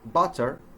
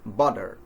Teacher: if the T falls in between two vowel sounds, in American English, the T is replaced by a D sound